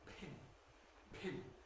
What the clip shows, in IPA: pʰɪn